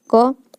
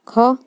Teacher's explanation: क तुरंत बोला गया, ख थोड़ा टाइम लग रहा है, ग तुरंत हो गया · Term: अल्प प्राण